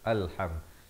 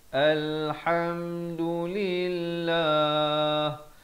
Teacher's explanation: Hamzah wasal bila berada di awal datang selepasnya huruf lam dibaca baris atas. Alham. Jangan baca ilham, jangan baca ulham, tapi baca Alhamdulillah.